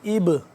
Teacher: یہاں پہ ہم قلقلہ کریں گے، با ساکن ہے